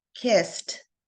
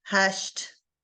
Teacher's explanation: Again, the T sound at the end. Hush has the SH sound, and of course, kissed has the S sound, which makes the ending sound like there's a T.